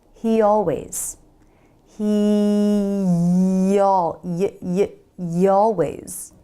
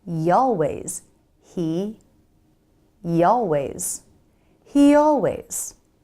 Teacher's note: the why is a glide consonant so we can use it to smoothly glide between words